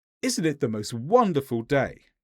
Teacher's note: If you go down, then you're saying something that you expect the other person to agree with. But if you go up, isn't it the most wonderful day?